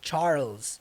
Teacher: Então, Charles, junto o som do L com Z